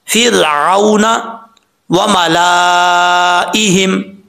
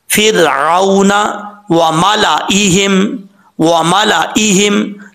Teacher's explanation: लाम को पढ़ेंगे, हमजा को पढ़ेंगे, लेकिन अलिफ को जो है पढ़ने की ज़रूरत नहीं है, इसको लंबा नहीं करेंगे